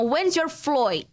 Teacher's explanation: flight né então o vira o muitas vezes sim o o o som de a né no sotaque de Dublin principalmente no sotaque assim mais da classe trabalhadora seria realizado como oi